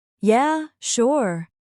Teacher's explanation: Notice the rhythm. It rises slightly on yeah and falls gently on sure.